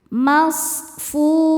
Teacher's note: Shad punya sifat yang tidak punya lawan namanya sofir. Sofir artinya berdesis seperti suara angsa. Masfu. Fu hukumnya mad tobi'i dhahiri karena ada waw sukun sebelumnya baris dhammah.